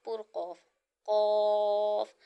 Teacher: یہ زبان کی جڑ اور تالو کے نرم حصے سے ادا ہوگا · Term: حروف لہویہ